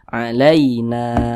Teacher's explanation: Nah, maka dibaca panjang. Matobi'i panjangnya 2 harokat atau kira-kira 2 ketukan.